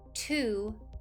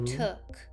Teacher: To becomes took when you relax the ooh and add a k at the end